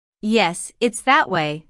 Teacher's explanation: Notice the stress on that. The speaker is pointing in a certain direction and wants to emphasize that direction.